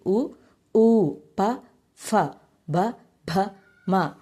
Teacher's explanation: ఓష్టములు అంటే పెదవుల నుండి పుట్టిన అక్షరాలనే ఓష్టములు అంటారు